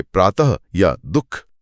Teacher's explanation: यहाँ सबसे रोचक बात यह है कि विसर्ग का उच्चारण भी सीधे गले से ही होता है, बिल्कुल ह की तरह।